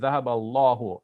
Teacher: But you see it doesn't have the A vowel at the beginning because we're going to take the A vowel from ذهب. In Arabic, the alif is written there, but in pronunciation, we are going over the alif. · in pronunciation, we are going over the alif. We're skipping the alif.